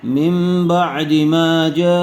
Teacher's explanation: نون ساکن یا تنوین کے بعد با آ جائے تو نون ساکن یا تنوین کو میم سے بدل کر غنہ اور اخفا کے ساتھ پڑھیں گے۔